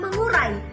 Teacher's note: masuk ke dalam kajian morfofonemis yaitu asimilasi nasal. Contohnya dari kata mengurai ini berasal dari awalan me dan kata dasar urai.